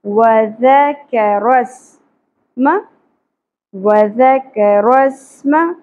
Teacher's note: سین میں سیٹی کی اواز انی چاہیے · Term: سیٹی کی آواز